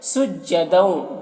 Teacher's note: دو میں ادغام ناقص ہو رہا، غنہ کے ساتھ میں پڑھیں گے